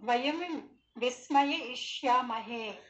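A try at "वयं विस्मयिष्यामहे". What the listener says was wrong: విస్మయ ఇష్యామహే బదులుగా విస్మయిష్యామహే అనండి.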